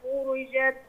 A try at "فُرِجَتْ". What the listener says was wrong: لا، ما طولش في الحركة، فرجت.